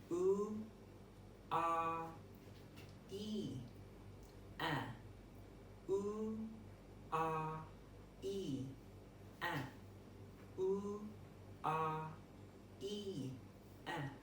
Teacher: U and R is a rounded vowel, whereas E is a spread vowel and A is a neutral vowel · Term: roundedness